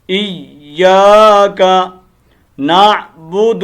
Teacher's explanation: اور ایک یہ غلطی کرتے ہیں پھر دوسرا کہ کاف کو لمبا کیا کرتے ہیں ایاک بھئی غلط ہے. کاف کو لمبا نہیں کرنا اور یا کو مشدد پورا کرنا ہے ایاک نعبد. اور دوسری غلطی کیا ہوتی ہے نعبدو پڑھ دیتے ہیں دال کو لمبا کرتے ہیں.